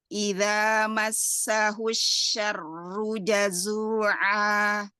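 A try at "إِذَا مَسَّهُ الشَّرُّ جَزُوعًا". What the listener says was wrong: Masya Allah, seperti ini. Ya, bagus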